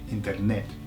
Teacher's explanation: skew the emphasis to the last E